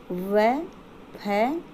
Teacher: दंतोष्ठ यानी ऊपरी दांत व निचले होठ से व, फ, ये जो दोनों वर्ण हैं ये हमारे दंतोष्ठ वर्ण कहलाते हैं।